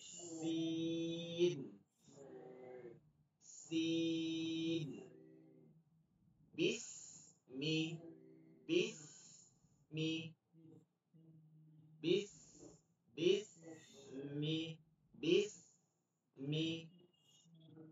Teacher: জিহ্বার আগাটা নিচের দুই দাঁতের আগায় লাগবে, চিকন হবে